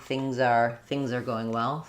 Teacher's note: if I'm linking, things are going well, I'll be able to say that Z with a little bit more voicing.